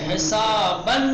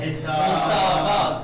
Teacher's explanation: تنوین نصب کو الف مدی میں بدلا جائے گا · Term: وقف ابدال